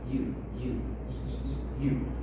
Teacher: your tongue gets very very close to the palette but still there is a little space that makes it some some sort of in between a vowel